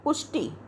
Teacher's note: पुष्टि में मात्रा जो है वो छोटी ई की है ट पे, इसलिए हमें इसको जल्दी बोलना है